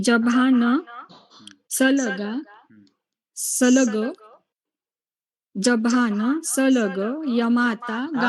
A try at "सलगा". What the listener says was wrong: आप मैम एक गड़बड़ करती हैं. आप सलगा को सलग बोलती हैं हमेशा.